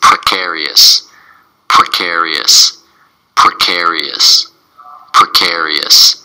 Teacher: it's four syllables and the stresses on the second syllable